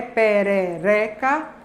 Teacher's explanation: A gente tem que o segundo ré, perereca, é a sílaba tônica. Então, a tendência é que as vogais pretônicas sejam também médias baixas.